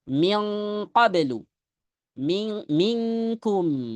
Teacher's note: Jadilah pengucapan indahuma pada qaf dan kaf bi gunnatin khalisatin dengan gunnah murni dari hidung.